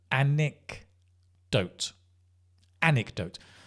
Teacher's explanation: stress is like on that first syllable